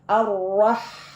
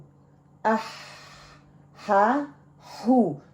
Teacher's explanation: یہ والا ہا کی آواز آنی چاہیے کیونکہ اس میں ہمس جو ہے اور رخاوا ہے، تو یہ تھوڑے ساؤنڈ کو لے کے چلنے والا لیٹر ہے۔